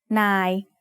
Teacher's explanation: it is mid-tone because it has an initial low-class consonant and has a live ending